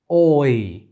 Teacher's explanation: So it doesn't only close the jaw, but also moves the tongue from the back to the front. There is a lot more tongue movement than an off glide. And it's also a little bit lengthier than a regular vowel. So the fact that we're using two symbols doesn't only look at the fact that it's longer, but also that there's this movement of the jaw on the tongue, and there's more movement than an off glide. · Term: oi diphthong